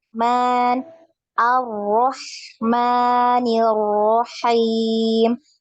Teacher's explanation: Ar-Rahmanir-Rahim. Jadi sekali getarannya.